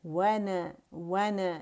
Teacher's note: وَنَا نا نہیں بولیں گے, وا نہیں بولیں گے, نا واو کر کے نہیں بولیں گے, واو. وَنَا نون باریک ہے, آواز کاؤنٹ کے لیے اوپر جائے گی, جبڑا کھلے گا.